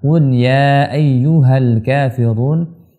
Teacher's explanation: Seperti biasa pada ayat yang pertama, qul ya ayyuhal kafirun, hati-hati pada lafal huruf qaf. Qaf di sini adalah huruf yang berasal daripada pangkal lidah, di mana lidah kita bagian belakang itu naik ke langit-langit atas, bagian lembut, yaitu tebalkan.